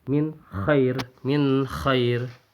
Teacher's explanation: Bunyinya min. Minnya itu dibaca dengan jelas, tidak disertai dengan dengung. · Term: izhar khalqi